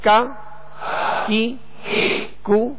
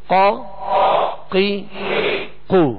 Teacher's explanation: فرق یہ ہے کہ کاف کو جو ڈنڈی والا کاف ہوتا ہے اس کو باریک پڑھیں گے، اور قاف جو دو نقطے والا ہے اس کو پر پڑھیں گے، موٹا پڑھیں گے.